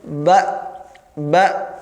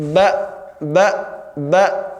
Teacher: pita suara langsung tertutup